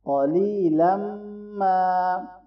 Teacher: قاف کو موٹا پڑھیں، یا مدہ ہے اور یہاں ملاتے ہوئے ہم غنہ کریں گے، آخر میں الف بھی مدہ ہے